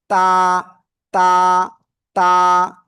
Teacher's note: জিহ্বার আগা সামনের উপরে দুই দাঁতের গোড়ায় লাগাবেন, লাগিয়ে একালিফটা নিয়ে উচ্চারণ করতে হবে।